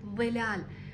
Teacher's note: عند النطق بحرف الظاء يخرج من مقدمه اللسان مع اطراف الثنايا العليا